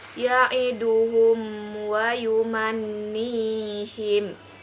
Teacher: bibir dan mulut tertutup contohnya ya edu hummm Wahyu manyin yaitu mim mati bertemu dengan huruf wow maka dibacanya jelas di bibir dengan mulut tertutup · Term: hukum izhar syafawi, izhar syafawi